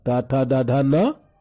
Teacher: टवर्ग, टाठा डाढ़ा न, और मूर्धन्य श का उच्चारण मूर्धा से होता है।